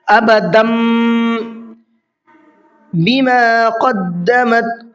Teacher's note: تنوین میں جو نون کی آواز نکلتی، اب وہ نون کی آواز نہیں بلکہ میم کی آواز نکلے گی، یہ میم پڑھا جائے گا۔